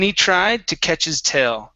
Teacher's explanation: we have he okay which we can drop the h and we have his where we can drop the h